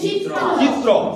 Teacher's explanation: বানান অনুযায়ী হওয়া উচিত র, কিন্তু উচ্চারণ অনুযায়ী এটা কি হয়ে যাচ্ছে তয় তয় র। তার মানে আমরা লিখছি চিত্র মানে জয়রশ্মি তয়র ফলা, আর উচ্চারণ করছি জয় হস্যইকার তয় তয় র ফলা, তাই তো?